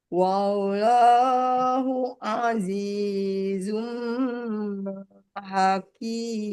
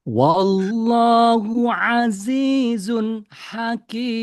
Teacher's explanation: Nunnya jelas, idhar halki.